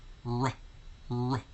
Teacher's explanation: There's a slight short U sound following the R sound.